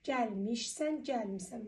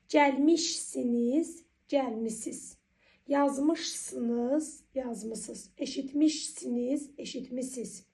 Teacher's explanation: Deməli mış miş muşmış şəkilçisinin tələffüsdə ş samiti düşür.